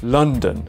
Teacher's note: many words such as London where non-native speakers might say London the O is replaced with the schwa sound · the O is replaced with the schwa sound. So instead we have London.